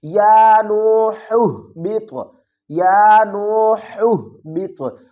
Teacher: طا ساکن ہے تو اس پر ہم قلقلہ بھی کریں گے